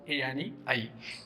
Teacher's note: या वर्णांचा उच्चार करताना आपण मुखातील कंठ आणि तालू या दोन्ही भागांचा उपयोग करतो, म्हणून या वर्णाचे नाव आहे कंठ तालव्य.